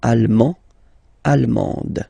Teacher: you don't pronounce the final D, but then you pronounce it here for the feminine form